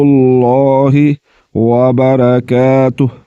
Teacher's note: لفظ اللہ کے لام کو پر یعنی کہ موٹا کر کے پڑھا جاتا ہے